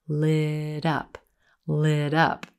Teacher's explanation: that T at the end of lit becomes a flap T this is a very North American speech sound · Typically, in this expression, you're going to use the past tense of light, lit, and notice how the two words combine, lit up, lit up. That T at the end of lit becomes a flap T.